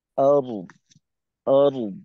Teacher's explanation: وما وما في الأرض السماوات وما في আচ্ছা, الأرض এই শব্দটার ক্ষেত্রে আরদ, আরদ, দদের আওয়াজও রাখতে হবে, রকে মোটা করে ধরতে হবে।